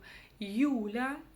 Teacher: мы сначала слышим и краткую, а затем уже остаточное звучание, звук Ü